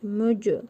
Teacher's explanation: Cim hərfinin üzərində cəzm var. Qəlqalə edərək tələffüz edirik.